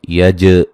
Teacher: جیم پہ قلقلہ کرنا ہے، جیم کو ہلا کے پڑھنا ہے